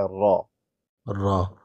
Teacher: ابھی آپ دیکھیے، اس آپ نے یاد رکھنا ہے، را پر زبر ہے تو مفخم پڑھا جاتا ہے